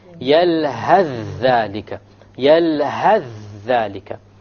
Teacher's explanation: You will drop the tha and move on directly. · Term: idgham